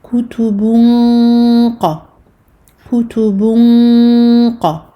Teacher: Donc on est dans le cas ici de al-irfa, la dissimulation. Nous allons cacher ici le noun du tanwin et nous allons nous préparer à la lettre qaf. Qaf pour laquelle on remonte le fond de la langue. · la runna ici sera emphatique car la lettre qaf est emphatique